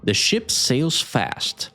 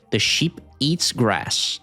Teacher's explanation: Ship has a short I sound, like ship, while sheep has a long E sound, like she, ship. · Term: vowel length